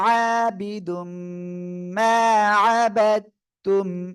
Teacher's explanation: তানবিনের পরে ঈদগামে বা গুন্নার অক্ষর মিম গুন্নার সাথে মিলিয়ে পড়তে হবে